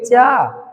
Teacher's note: चा बोलकर देखेंगे, प्रैक्टिकली बोलेंगे चा। जब चा बोल रहे हैं तो हमारी जिह्वा कहां? तालु को छू रही है। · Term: स्पर्श व्यंजन